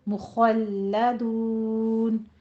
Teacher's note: खौ को पुर रखना है, लाम बारीक रहेगा, ठीक है। खौ को पुर रखना है, लाम बारीक रहेगा।